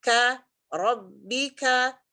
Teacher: kafnya jelas, ketemu langit-langit yang keras, kemudian kasih hamasnya.